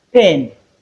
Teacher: the sound P, which is a voiceless bilabial sound, voiceless bilabial plosive sound